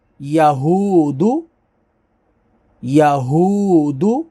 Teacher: واو ساکن سے پہلے پیش ہے تو واو مدہ ہوگی، اس کو کھینچیں گے